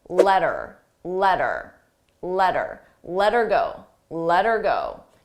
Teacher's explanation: her sounds like er you don't hear the age ER but I also attach it to the word before so I link those sounds together letter letter letter letter Go